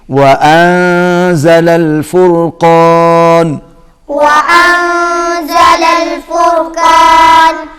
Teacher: یہاں نون پر ہم اخفا کریں گے، آواز ناک میں جائے گی